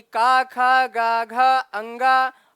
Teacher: आ और का वर्ग, यानी का खा गा घा अंगा, हा और विसर्ग का उच्चारण स्थान कंठ होता है